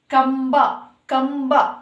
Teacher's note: ಸೊನ್ನೆ ಮುಂದೆ ಬ ಅಕ್ಷರ ಬರ್ತಾ ಇದೆ ಹಾಗಾಗಿ ಬಂದು ಪ ವರ್ಗಕ್ಕೆ ಸೇರಿರೋದ್ರಿಂದ ಸೊ ಇಲ್ಲಿ ಕೂಡ ನಾವು ಮ ಅಕ್ಷರವನ್ನ ಉಚ್ಚಾರಣೆ ಮಾಡ್ತೀವಿ